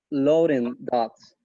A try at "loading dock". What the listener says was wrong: I still want it back a little bit further. Loading.